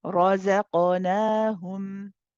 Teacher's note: But then after making the za light, you're joining it with a heavy qaf. So this is again shifting heavy ra, light za, back to heavy qaf, and qaf it has qalqala. Here, it's a bouncy letter, so we bounce it. · so it's heavy ra, light za, heavy qaf, light noon, and then the rest is light